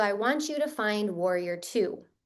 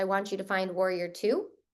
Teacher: dropping the tone slightly at the end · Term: ending your sentences with confidence